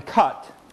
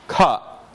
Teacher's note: And the last of these central vowels is created by, again, leaving the tongue, bringing it neither forward nor back, leaving it in the central region, but lowering it slightly. And this is the sound you find in cut.